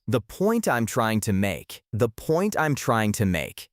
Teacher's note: notice that the T in point is almost silent. It's a stop T. It sounds like the points I'm trying to make.